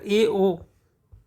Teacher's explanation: अर्ध संवृत्त का मतलब है जब आप बोलते हो तो अपने जो होंठ हैं वो कितना खोलते हैं, वो आधा खोलते हैं या पूरा वृत्त बनाते हैं, ठीक है, उससे रिलेटेड है।